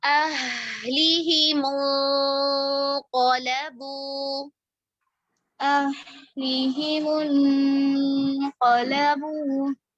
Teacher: ہا ساکنہ رخاوہ کا ٹائم دیں گے. أَهْلِهِمُ انقلبوا.